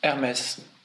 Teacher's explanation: Lowercase AIR dash capital MEZ. So the emphasis is on the second syllable.